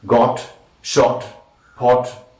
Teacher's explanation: it is back, open, rounded and short vowel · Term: short o